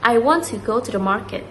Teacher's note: in that sentence, we emphasize or we put stress more in the word want, go, and market.